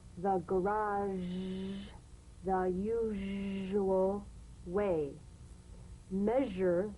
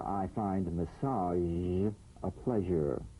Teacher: make the whispering SH and add vocal resonance all suggestion of the SH must vanish feel the SH overridden